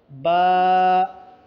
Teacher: दोनों होठों के तर हिस्से को मिलाने से बा अदा होते हैं। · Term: बा का मखरज